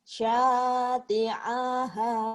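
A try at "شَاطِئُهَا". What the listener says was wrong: A-nya pendek.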